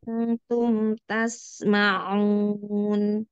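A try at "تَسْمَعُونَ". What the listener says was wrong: ya, ainnya latih untuk tidak pakai ancang-ancang. Tasmeh, itu ancang-ancang. Terus jauhan giginya ya. Iya, kalau deketan nanti suaranya di dalam lagi.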